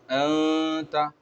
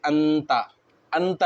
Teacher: اب یہاں پر نون ساکن ہے، اس کے بعد حروف اخفا کے 15 حرف میں سے تا ہے، تو یہاں پر جو قاعدہ ہوگا وہ اخفا کا قاعدہ ہوگا، اور نون کی آواز کو ناک میں چھپا کر پڑھا جائے گا